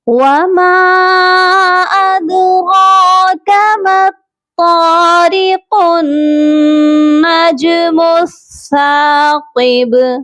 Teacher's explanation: پھر قاف کو ڈائریکٹ ہم نے نون مشدد کے ساتھ ملا دینا ہے